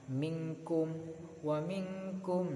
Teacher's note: maka dihukumi dengan ikhfa' bacanya samar